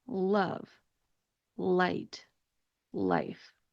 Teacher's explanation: When you have the light L sound, the shape of your mouth is also different from the dark L. So the light L sound occurs when the L is at the beginning of a word